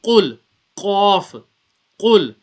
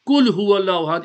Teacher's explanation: Now that Qaf is pronounced from the top of the throat.